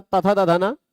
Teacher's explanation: दंत उच्चारण स्थान वाले 5 हैं, और साथ ही साथ स्पृष्ट प्रयत्न वाले भी 5 हैं